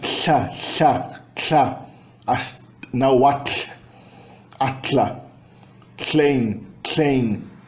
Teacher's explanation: é lateral, é uma fricativa lateral